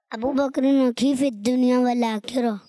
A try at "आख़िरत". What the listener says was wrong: आखिरा हो रहा है, आखिरा